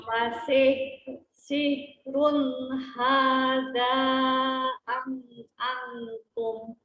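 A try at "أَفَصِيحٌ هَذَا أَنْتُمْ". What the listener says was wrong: Nun ketemu taknya coba didengungkan, ikhfa kan?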